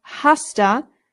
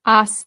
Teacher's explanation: Remember the h in Spanish is silent. So this is not hasta just aa.